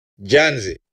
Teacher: the penult syllable is way more intense and way more longer than the final syllable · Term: stress